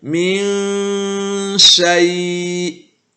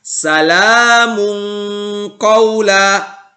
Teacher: Maka nun sukunnya dibaca samar. Tidak dibaca jelas dan tidak juga dengung sempurna. Yaitu min syai'. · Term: ikhfa hakiki